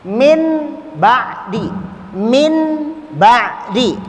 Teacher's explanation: Yang tadinya suara N menjadi suara M. Ya, yaitu apabila nun sakinah atau tanwin bertemu ba, satu huruf saja, suara N-nya berubah jadi M. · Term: al-iqlab